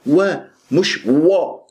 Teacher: لانها الراء مفخمه فانت تفخم الواو